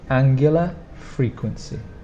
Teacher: you need to remember to pronounce the stronger sound on the first angular and again on the first frequency